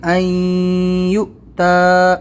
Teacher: حمزہ کے اوپر ساکن ہے تو ہم یہاں پر اس کو جھٹکا دیں گے